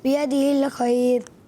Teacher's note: را باریک کریں گے